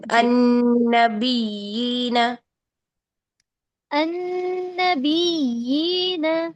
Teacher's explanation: یہ جو یا ہے نرمی کے ساتھ آواز جاری رکھیں رخوت کے ساتھ